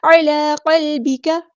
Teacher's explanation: عین کو وسطی لیکن مڈل تھروٹ سے ادا کریں گے